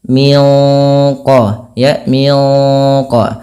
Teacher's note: kita bacanya nunnya disamarkan langsung ke huruf qaf yang dia menebal Min qo ya Min Q pangkal lidahnya terangkat Min qoblhim Nah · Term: Ikhfa Hakiki